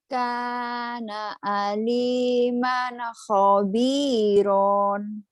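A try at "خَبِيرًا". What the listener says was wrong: kana aliman khabiran. Khabiran. Kurang bagus. Ronnya tadi. Kana aliman khabiran.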